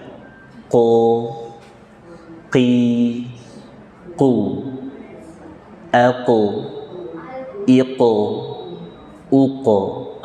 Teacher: Qaf itu letaknya di pangkal lidah bagian atas. Istilahnya fauqa aqsal lisan.